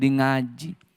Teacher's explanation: Orang Jawa nggak bisa bilang ka, jadi yang mengaji, lama-lama jadi ngaji.